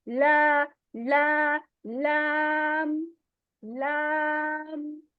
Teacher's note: ٹھیک ہے، یہ جو لا ہے نا، اس میں لا میں ہماری آواز جو ہے وہ ناک میں نہیں جائے گی